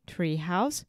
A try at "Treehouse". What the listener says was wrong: initially said Treehouse, which is like a Portuguese pronunciation. You want to say tree.